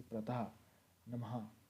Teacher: तो विसर्ग इसका उच्चारण जो है वो ह के समान होता है